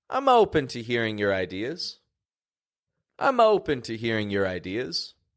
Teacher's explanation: the word open peaked up here it raised up two octaves and the O stretched out more than the vowels of the other words the other words were kind of lower to medium in Pitch